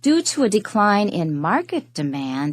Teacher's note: we're not done with the sentence so we have to rise it's called a continuation rise